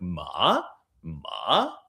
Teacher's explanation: The third tone is a high rising tone denoted by a ladder going up.